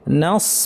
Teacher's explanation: নাস বলার সময় নুনটা পাতলা কিন্তু সদটা ভারী